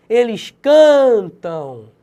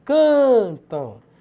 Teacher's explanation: Paroxítona, porque a penúltima sílaba é tônica.